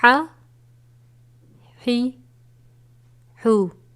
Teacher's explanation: یہ باریک ہا ہے جو حلق کے درمیان سے ادا کیا جاتا ہے۔